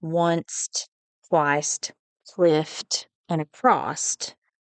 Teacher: So they say that usually words ending in S and F in standard English can be produced with a final T in vernacular English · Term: intrusive T